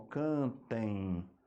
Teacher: como o som passa pelo nariz também além da boca a gente tem o ditongo nasal